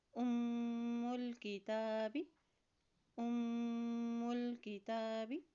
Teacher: جب میم کے اوپر شد آتی ہے وہاں پر غنہ بھی ادا کیا جاتا ہے · ہن، ہن، ام الکتاب، ام الکتاب، یہاں غنہ کرتے ہوئے پڑھیں گے، اور شد ہونے کی وجہ سے اس میم کی پیش کو لام کے ساتھ بھی ملائیں گے، لام کے اوپر بھی جزم ہے، ٹھیک ہے۔